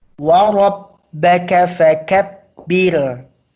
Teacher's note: Ra-nya tebal, birnya tipis.